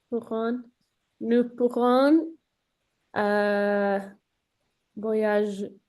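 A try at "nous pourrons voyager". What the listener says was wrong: Excellent, excellent. Très bonne phrase.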